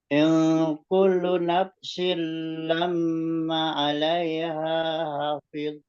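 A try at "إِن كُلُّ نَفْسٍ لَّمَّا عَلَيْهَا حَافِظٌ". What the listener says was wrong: Itu tadi terlalu cepat. Sedang saja. In kullu nafsin lamma 'alaiha hafid.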